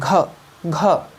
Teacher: घ बोल रहे हैं तो उच्चारण स्थान कहाँ प्रतीत हो रहा है, कंठ प्रतीत हो रहा है।